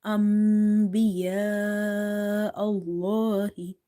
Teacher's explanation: So here instead of saying anbiya Allahu, you have to say You have to replace the noon sound with the meme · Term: iklab